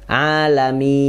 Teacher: huruf nun tipis dan ada mengalir sedikit